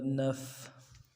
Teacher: نون فا زبر نف، نف جزم ہے، سکون ہے فا کے اوپر تو آواز جاری رہے گی